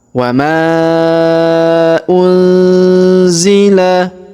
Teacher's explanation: nun sukun bertemu Zi lagi hukum ikhfa kita baca dengung dan samar